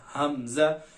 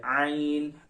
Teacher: हमजा जो है वो अक्सा हल्क यानी हलक के आखिरी हिस्से या सीने से अदा होता है हमजा, लेकिन आइन जो है वो वस्ते हल्क यानी हलक के दरमियानी हिस्से से अदा किया जाता है। आइन, आप इस दरमियानी हड्डी को जब प्रेस करेंगे तो आपका आइन निकलेगा।